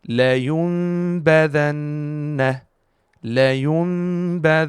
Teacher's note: So as we said in the rule of Iqlab, we will turn over this Noon Sakin into Meem and mix it into the Ba with Ghunnah for 2 beats.